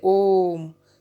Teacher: इनके उच्चारण में ह्रस्व दीर्घ स्वरों के उच्चारण से तीन गुना समय लगता है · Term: प्लुत स्वर